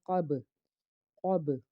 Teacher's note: قاف کو پر پڑھنا ہے کیونکہ حرف مستعلیہ کا حرف، آگے با ساکن ہے یعنی کہ حروف قلقلہ کا حرف ہے اور آواز لوٹ کے آنی چاہیے۔